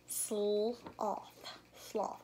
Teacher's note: We hear both the S and the L sound in the initial position. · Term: blend